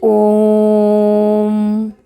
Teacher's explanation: दीर्घ स्वर से भी अधिक समय यह लेता है द में दुगना समय लगता है ना यह उससे भी ज्यादा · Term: प्लुत स्वर